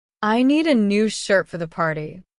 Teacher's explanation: The other words like a for and the are said more quickly and with less emphasis. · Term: sentence stress